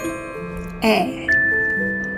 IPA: æ